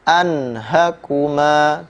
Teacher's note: Nun sukun bertemu ha. Maka bunyi nunnya itu dibaca dengan jelas. Anhakuma. Tidak boleh ada dengung.